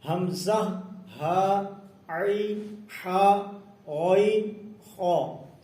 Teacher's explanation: پہلے 2 حرف حمزہ اور ہا حلق کے نیچے والے حصے سے ادا ہوتے ہیں، عین اور حا حلق کے درمیان والے حصے سے ادا ہوتے ہیں، اور غین اور خا حلق کے اوپر والے حصے سے ادا ہوتے ہیں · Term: حروف حلقی